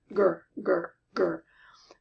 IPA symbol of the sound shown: g